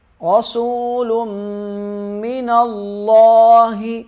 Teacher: را موٹا پڑھیں گے، میم پہ غنہ کریں گے، نون لام کے ساتھ سختی سے ملے گا، اور لام کو موٹا پڑھیں گے